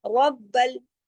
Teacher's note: را موٹا، با 2 مرتبہ سختی سے